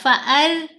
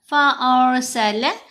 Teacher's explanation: تو پھر را ساکن کو باریک پڑھتے ہیں۔ ابھی کیا ہے، را ساکن سے پہلے حمزہ کے اوپر زبر ہے تو ہم پڑھیں گے فا اور را کو موٹا ، فَأَر نہیں کرنا، فَأَرْسَلَ